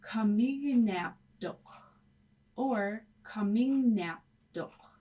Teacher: KN cannot be together, so KN will change to GN, or it could also change to N with the tail N. Either way are correct.